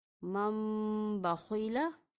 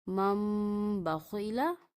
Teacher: من بخیلا، یہاں بھی نون ساکن کے بعد حروف با آ رہا ہے تو ہم نون ساکن کو میم کی آواز میں تبدیل کر دیں گے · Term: اقلاب